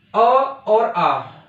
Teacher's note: अ और आ, इनका उच्चारण स्थान मुंह में किस जगह है, तो इनका जो उच्चारण स्थान है वो कंठ है